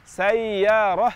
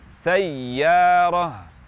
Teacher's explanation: kita nabr, aksentuasi di huruf ya supaya tidak terkesan bunyi lin di sayyarah. Karena jika tidak kita baca dengan nabr, akan berbunyi sayyarah seperti lin.